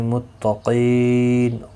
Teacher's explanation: قاف مستعلیہ ہے، پر پڑھا جائے گا، اس کے اوپر کھڑی زبر بھی ہے، ایک الف کی مقدار کے برابر کھینچ کر پڑھیں گے.